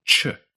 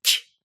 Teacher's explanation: Korean's ch sound is made with the tongue a bit further forward, and the middle of the tongue further up, like this, ch.